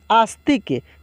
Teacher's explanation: और देखिए यहाँ पे आ और त और क का उच्चारण पूर्ण रूप से हो रहा है, लेकिन स का उच्चारण बहुत ही तेज़ी से हो रहा है क्योंकि वो आधा है